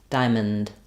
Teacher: then the O is basically awah here so almost no vow I'm going to go right from my M sound to my n Diamond M so I'll write with no vowel um the